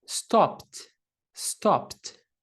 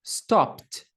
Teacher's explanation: Não está vibrando o som, esse som de explosão, de estouro, é na boca. As cordas vocais não estão vibrando. Então, esse é um voiceless sound, faz com que as nossas cordas vocais não vibrem.